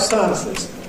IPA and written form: ˈsaənsɪz (Sciences)